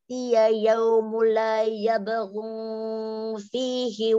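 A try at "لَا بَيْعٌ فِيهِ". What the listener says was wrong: Umi, la bay'un fi, bukan yabghu. La bay'un fi. Langsung saja la bai'un fi.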